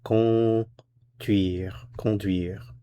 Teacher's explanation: Notice for pronunciation, the first vowel here is nasal.